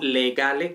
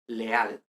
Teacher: esta elisión de oclusivas sonoras, es decir, que desaparezcan por completo